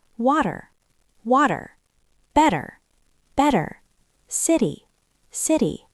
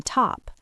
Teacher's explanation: In American English, we don't say a sharp T like in top. We make a very quick soft duh sound. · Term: flap T